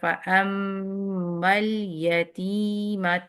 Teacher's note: میم پہ شاد ہے تو آپ نے 2 کاؤنٹ اس کو غنہ کرنا اچھا سا